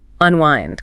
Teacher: The stress is on the second syllable, right?